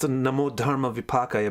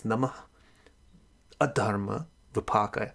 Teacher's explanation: Actually, so it's pronounced Namo Dharma Vipakaya, but if you take the words apart, it's Namaha Adharma Vipakaya. The way the sounds smush together, it comes Namo Dharma Vipakaya. But if you separate the sounds, it's Namaha Adharma Vipakaya.